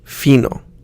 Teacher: the I is pronounced like the I in machine, but a little bit shorter, in fino. The O is pronounced like the beginning of O in open, but we don't want to use the ow sound.